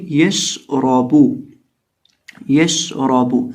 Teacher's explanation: जुबान का वस्ल जब ऊपर मद्दे मुकाबिल तालु से लगता है तो शीन अदा होता है